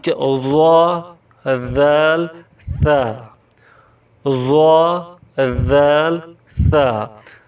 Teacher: ज़बान की नोक ऊपर सामने वाले दो दांतों के किनारे से अदा होते हैं।